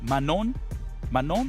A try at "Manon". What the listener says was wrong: Yeah, you don't say the N. Yeah, the N. Yeah, we don't say the N. We don't like, you know, the last letters.